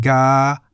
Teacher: begins with the middle-class consonant go gai and is in the middle tone